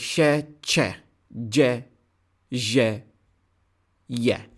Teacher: Palatals. The tongue and the hard palate.